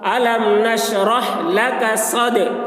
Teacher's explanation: دال حروف قلقلہ میں سے ہے اور اس پر جزم ہے، اس لیے دال میں قلقلہ ہوگا